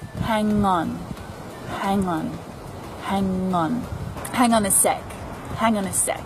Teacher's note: I say them quickly hang on a sec and that's because the consonant sounds at the end of these words linked straight to the vowel sounds that follow